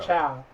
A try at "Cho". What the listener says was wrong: mispronounce it and say Chow. My name's Captain Cho.